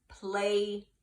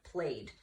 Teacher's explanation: And even though it's an ED ending, I only hear the D.